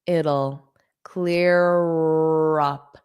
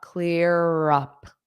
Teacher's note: So you're going to hear that R in front of the up.